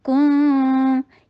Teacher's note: یہ کاف کا اخفا جو ہے وہ اسی طریقے سے ہوتا ہے، ہمیشہ ہمیشہ یاد رکھیے کاف کا اخفا بولنے کے لیے آپ کو انک کی ساؤنڈ کا فیل آئے گا۔ کن کاف کے پر ضمہ، ہونٹوں کو گول کر کے اور شارٹ رکھیں کاف کو